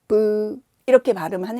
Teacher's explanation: 바람이 아주 부드럽게, 안 나가는 것처럼 브- 하는 거고요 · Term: 비읍